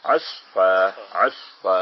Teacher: جب وقف کیا تو اسفن کی بجائے ہو گیا عصفا، عصفا، ایک زبر رہ گئی اور الف ساتھ پڑھا گیا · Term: وقف کرنے کا